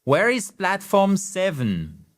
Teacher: vous faites redescendre l'intonation à la fin